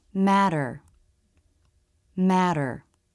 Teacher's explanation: We don't hold anything. We simply let the front part of the tongue bounce against the roof of the mouth without stopping the flow of air. The flap T and flap D sound the same.